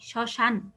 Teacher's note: শ্মশান শব্দটা একটু আগে বলেছে, দেখো শ্মশানে আমরা এটাকে শ্মশান বলছি না, স বলছি, জন্য এখানে তালব্য সই ব্যবহার করছি। আর মফলার পরিবর্তে এখানে চন্দ্রবিন্দু মানে একটু নাসিক্য করে উচ্চারিত হচ্ছে। আর লাস্টে যেহেতু থামছি, শ্মশান, এই জন্য এখানে একটা হসন্ত ব্যবহার করেছি।